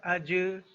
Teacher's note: حمزہ جیم زبر اج، جیم بھی قلقلہ حرف ہے اور اس کے اوپر جزم ہے تو قلقلہ کی آواز پیدا ہوگی